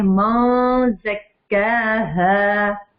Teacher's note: थोड़ा सा नून की आवाज को आधा छुपाते हैं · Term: इख्फा